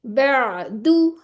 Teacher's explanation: आइन की आवाज थोड़ी सी चलानी है। यानी कि आप मखरज पर थोड़ी देर रुक जाए। उसको चलाएं थोड़ा फिर आपका झटका नहीं लगेगा।